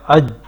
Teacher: یہ دیکھیں جیم کا مخرج جو ہے وہ زبان کا درمیانی حصہ جب اوپر تالو سے لگے تو جیم ادا ہوتا ہے، تو اب یہ دیکھیں ایسی سختی کے ساتھ ٹھہر رہا ہے وہاں پہ اج، ٹھیک ہے۔ آواز جو ہے وہ بند ہو رہی ہے اور ایک قسم کی سختی ہو رہی ہے